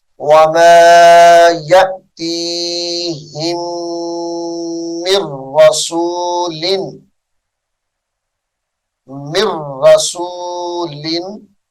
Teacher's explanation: ہا کو میم مشدد کے ساتھ ملائیں گے اور میم ساکن کو چھوڑ دیں گے